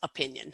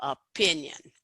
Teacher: we put the most stress on that second syllable